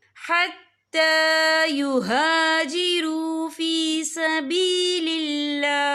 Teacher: ता के ऊपर खड़ी हरकत है, तो हम यहाँ 2 या 3 हरकत के बराबर खींच के पढ़ेंगे। और आगे देखिए युहाजिरू फी सबीलिल्लाह, यहाँ अल्लाह का नाम बारीक पढ़ा जाएगा क्योंकि अल्लाह के नाम से पहले ज़ेर है। · वफ़ की सूरत में हा जो है साकिन हो जाएगा।